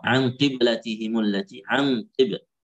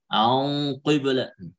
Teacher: kasrah qafnya, maka di sini tafkhim juga, tetapi tafkhimnya lebih sedikit karena kasrah itu mempengaruhi tafkhim. Maka di sini nggak boleh an qibla, harus an qiblatihim.